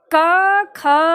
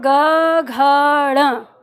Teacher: क ख में कंपन न के बराबर है और ग घ में कंपन आपकी उंगली में भी कंपन होने लगता है